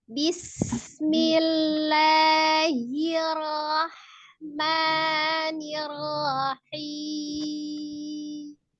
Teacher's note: Alirkan as-safir desisnya sinnya.